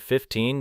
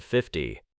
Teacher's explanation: 15 usually carries stress on the second syllable in isolation or careful contrast, while 50 has a different ending and rhythm.